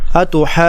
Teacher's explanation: نون پر غنہ ادا کر کے پھر یا کے ساتھ ملا دیں گے